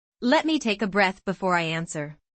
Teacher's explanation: Notice how the word breath comes with a slight pause after it. That pause shows confidence.